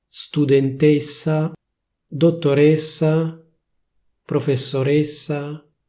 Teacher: La pronuncia ufficiale sarebbe studentessa, dottoressa, professoressa, quindi con la E chiusa